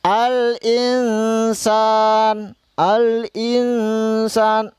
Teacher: dengan Ikhfa Hakiki contohnya ini ada contohnya Al Insan Al Insan dibaca samar-samar samar-samar sambil mendengung Al Insan nun mati ya Nun mati bertemu dengan huruf Sin